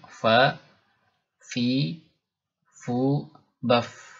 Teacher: Huruf fa ini ketika diucapkan selain punya sifat hamas mengalirnya nafas, juga punya sifat rakhawah mengalirnya suara. Jadi nafas dan suara mengalir ya, lepas.